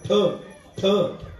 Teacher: ठकार हा महाप्राण आहे